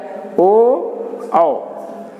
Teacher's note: ये कंठोष्ठ लिखा गया है। कंठोष्ठ, कंठ और ओंठ से दोनों को जोड़ने के बाद ही ये स्थान से निकलते हैं, उच्चारण स्थान से, इसलिए इनका नाम रखा गया है कंठ औष्ठ।